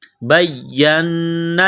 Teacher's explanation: نون مشدد پر غنہ کریں گے آواز ناک میں چھپائیں گے